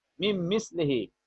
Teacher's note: Noon is not pronounced, but mim is pronounced double. So it is idgham.